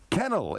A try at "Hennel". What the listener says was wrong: Hennel with a H.